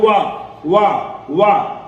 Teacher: वा को जब हम बोलते हैं तो हमारा दांत और होठ दोनों छूता है जबान को, जीभ को दोनों टच होती है, इसलिए इसका उच्चारण स्थान क्या हो जाता है? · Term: दंतोष्ठ